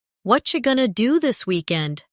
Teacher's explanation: Did you hear how what are you going to became what you gonna? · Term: connected speech